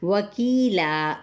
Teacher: واو ہونٹوں کی نا تمام گولائی کے ساتھ ، کی پہ یا مدہ، لا اب الف مدہ کے ساتھ